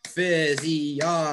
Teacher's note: it's actually the third syllable gets the stress. So this is a four syllable word.